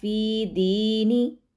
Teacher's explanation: فی کو بھی لمبا کریں گے یا مدہ کی وجہ سے، دی کو لمبا کریں گے یا مدہ کی وجہ سے، نون کو لمبا نہیں کرنا